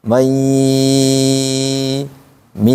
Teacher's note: Karena namanya idgham bighunah, maka harus keganggu. Kemudian ditahan dua harakat.